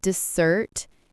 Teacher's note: Dessert with the stress on the second syllable means something sweet like cake or ice cream.